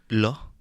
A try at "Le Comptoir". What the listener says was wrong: Le. No, you're saying the feminine. Le